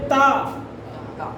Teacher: हम दांतों के माध्यम से हवा को रोकते हैं, जीभ और दांतों के माध्यम से, इसके बाद उसको छोड़ते हैं।